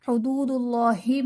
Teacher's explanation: حدود اللہ میں واو ساکن سے پہلے دال پر پیش واو مدہ کا قاعدہ، اور اسم جلالت اللہ عز و جل کے لام سے پہلے دال پر پیش تو یہاں پر اسم جلالت اللہ عز و جل کے لام کو پر یعنی موٹا پڑھیں گے